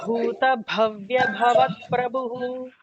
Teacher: The bhu here is the Mahaprana. It is the second bha. So we'll have to all the bhas in this, like there are 4 bhas and all 4 are the Mahaprana.